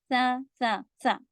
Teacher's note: यह जबान की नोक ऊपर के दांतों में इस तरह से आप टच करें कि हल्की सी नोक बाहर आएगी